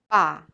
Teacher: Pa is aspirated like P, pa. But ba is tense without aspiration